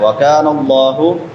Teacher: کاف بریک ہوگا، لفظ اللہ موٹا ہوگا